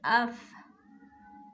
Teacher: ہماری آواز جو ہے وہ پستی سے ٹھہر گئی ہے لیکن سانس جو ہے وہ جاری رہتی ہے، کیونکہ اس میں حمز کی صفت پائی جاتی ہے۔